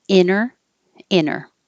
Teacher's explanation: the vowel is e like hit and this one definitely has no T it's just inner